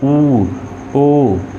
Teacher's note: जैसा बोलते हैं ओ, ठीक है, ऊ, ठीक है। अब ओ बोलने में होठ क्या हो रहे हैं? गोल घूम रहे हैं, ऊ, ओ। तो यहाँ पर जो होठों की स्थिति पर पहला प्रकार होता है वो होता है वृत्तमुखी, और दूसरा होता है अवृत्तमुखी।